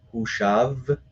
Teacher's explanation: This becomes one long E sound, Yitav. And then U becomes a longer U sound, so Hushav. Again, the Shva here drops out, gets replaced by Shurek Vav, becomes Hushav.